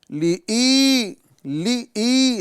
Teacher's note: تو آج ہم دیکھیں گے کہ یہاں پر لام زیر لی، لام زیر لی، اس کے بعد میں حمزہ یا زیر ای، یہاں پر ہم دیکھیں گے حمزہ یا زیر ای، یا مدہ آ رہی ہے، یعنی حمزہ بھی ہے اور یا مدہ بھی ہے۔ تو یہاں ایک الف کے برابر کھینچ کے جب ہم پڑھیں گے تو یہ واضح ہو جائے گا کہ یہاں پر حمزہ ادا ہوا ہے